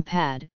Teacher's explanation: the near open front unrounded vowel